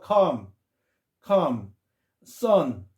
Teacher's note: 아의 중간 발음인데 아가 약간 강하다고 생각하면 되겠습니다